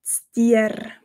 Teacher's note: Auch hier in diesem Wort betonen wir das R stark und rollen es